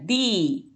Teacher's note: A língua está apoiada atrás dos dentes superiores, se abre o sorriso e ela vai descer.